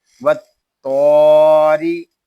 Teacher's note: را کے نیچے زیر ہے، را کو ہم باریک پڑھیں گے